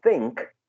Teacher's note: The k is affecting the previous sound, right? And it's not as in nine, but as the last sound in song. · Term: regressive assimilation